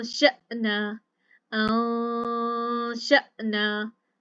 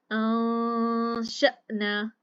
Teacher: हमजे के बाद शीन अदा करके नून की आवाज खुद ब खुद हमारे नाक में जाएगी, लेकिन जबान को ऊपर नहीं उठने देना